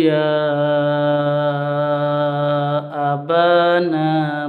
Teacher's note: ini mad jaiz munfasil, panjangnya 5 sampai 6, sampai 6 ketukan atau harokat